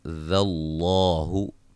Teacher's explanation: لفظ اللہ کے لام کو موٹا ادا کریں گے، اس سے پہلے حرف پر زبر ہے